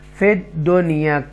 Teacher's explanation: फिद दुनिया को कोई गुन्ना नहीं करेंगे, क्लियर पढ़ेंगे